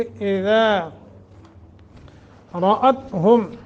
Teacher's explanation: रा को मोटा करेंगे, ता पे कलकला नहीं होगा।